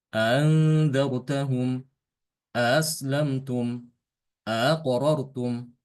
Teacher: Dia langsung membaca hamzah kedua itu tanpa menambahkan alif di antara keduanya